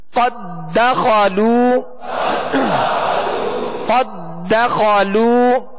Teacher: یہاں ادغام مثلین تام ہے یعنی قد دخلوا نہیں پڑھیں گے، دال کو دال میں مکمل داخل کریں گے